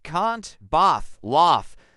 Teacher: So, can't, bath, laugh. But in southern British English, this becomes a broad open a sound